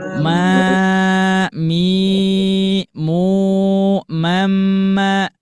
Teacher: kalau misalkan di mama itu dari dengungannya akmal, berarti disempurnakan ya.